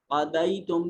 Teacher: قَضَيْتُم میں یا ساکن ماقبل مفتوح یا لین ہے